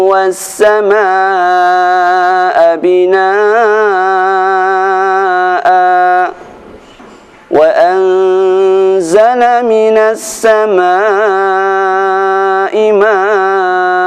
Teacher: Bacaan binaa'a dan maa'a, a-nya dibaca panjang 2 harakat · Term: fathah panjang